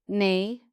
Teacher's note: You will hear it as a short nasal syllable at the very start of a fuss. It comes from the sucking reflex, the tongue pushing up against the roof of the mouth as the baby prepares to feed.